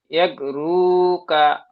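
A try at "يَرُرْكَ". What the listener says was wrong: এক রু কা নয়, এক রুর কা।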